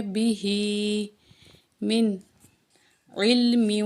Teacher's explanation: ہا کے نیچے جو ہے کھڑی زیر ہے، ایک الف کو برابر کھینچ کے پڑھیں گے